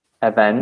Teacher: event with the stress on the second syllable